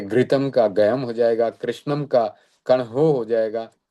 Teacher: तो इसमें ऋितोत में बताया गया है कि शब्द से रही हुई आदि ऋ को अ होता है।